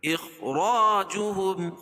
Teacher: خا کو پر پڑھیں گے اور را کو بھی پر پڑھیں گے اور الف سے پہلے را کے پر زبر ہے تو الف